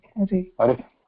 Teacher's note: And don't put a lot of pressure. Very soft, just the air going out without touching anywhere in the kantha. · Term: visarga